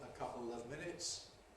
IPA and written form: ə ˈkʌpl̩ əv ˈmɪnɪts (a couple of minutes)